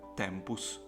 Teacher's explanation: The obstacle here is your tongue, which is put on your teeth. As soon as you remove the tongue from your teeth, you have the sound T.